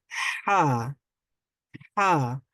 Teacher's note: স্বাভাবিকভাবে আমরা যেভাবে বাংলায় হা বলি বা হ উচ্চারণ করি সেইভাবে নয়, সেখান থেকে আরেকটু চাপ দিয়ে হা উচ্চারণ করতে হবে